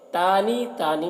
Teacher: تانی میں کھڑا زبر ہے، 1 الف کے برابر کھینچ کر پڑھیں گے